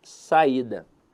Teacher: Veja que a sílaba tônica dela está na penúltima sílaba. Então, a verdade é que a palavra saída é uma paroxítona.